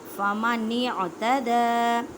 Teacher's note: دال کو ایک الف کی مقدار میں کھینچ کر پڑھیں، کیونکہ دال کے اوپر کھڑی زبر ہے. یا کو نہیں پڑھنا، کیونکہ یا اس میں یہ کچھ ایسے حروف قرآن پاک میں ہیں جن پہ کوئی حرکات نہیں ہوتی.